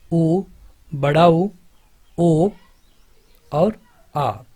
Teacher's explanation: ऐसे स्वर जिनके उच्चारण में जो होठ का आकार है वो गोल हो जाए उनको हम वृत्ताकार स्वर कहते हैं।